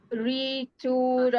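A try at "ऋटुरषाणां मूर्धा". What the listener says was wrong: It is not re. There is no re. There is no e there. No, there is no u also. It is r. There is no u. There is no e. So it is riturashanam murdha. Not ritur. There is an akara after refa. So it is riturashanam murdha.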